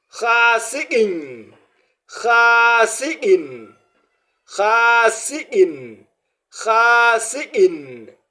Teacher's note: à cause de cette tanwin, bien sûr, kasra, voilà, on doit avoir l'impression comme si on a ajouté le i plus le n. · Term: tanwin kasra